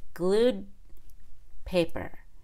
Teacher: we can still make a held D before the consonant in the next word glued paper it's very obvious that I'm not saying glue paper